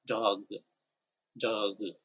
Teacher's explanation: you're going to feel vibration of your vocal cords